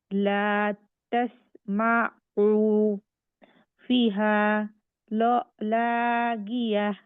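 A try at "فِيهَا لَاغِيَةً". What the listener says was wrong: ফিহা নাকি ফিহা? টান হবে, ফিতেও টান হবে, হাতেও টান হবে।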